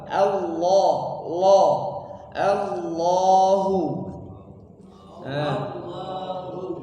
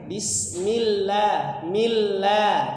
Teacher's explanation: kalau sebelumnya harakat fathah maka menjadi tafkhim tebal mufakham dibaca tebal Allah l Allahu Allahu tapi kalau sebelumnya kasrah dia dibaca tipis